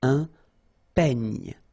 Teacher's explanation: Final E, you don't insist on it. It's ny, the last sound.